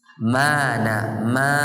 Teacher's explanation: huruf mim bertasydid dan nun bertasydid setelah mad, maka harus diperhatikan bacaan gunnahnya. Gunnahnya tetap harus dijaga.